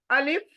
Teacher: खाली मुंह से पढ़ा जा रहा है बारीक करके